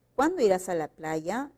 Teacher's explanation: El tono es descendente, no podemos cambiar el sentido.